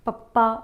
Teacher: ਪੱਪਾ ਬੋਲਦੇ ਹੋਏ ਆਪਾਂ ਨੂੰ ਪਤਾ ਚੱਲਦਾ ਕਿ ਆਪਣੇ ਦੋਨੋਂ ਹੋਠ ਆਪਸ ਦੇ ਵਿੱਚ ਇਕੱਠੇ ਹੁੰਦੇ ਨੇ।